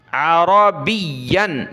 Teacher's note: را کو موٹا کریں گے اور یا کو ہم نے سختی کے ساتھ پڑھنا ہے، تشدید ہے۔ عین زبر ع، را زبر را، عرا، با یا زیر بی، یا دو زبر ین، بین، عربین۔